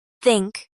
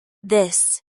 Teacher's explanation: think has the voiceless th and this has the voiced th. In casual speech, these can sometime be softened, especially between words, but they're never replaced by s or z sounds in standard American English.